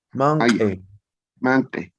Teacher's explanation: en la tercera persona del verbo mancaya, como termina en i, se pronuncia manque o manqui. En la pronunciación no termina en i, sino en e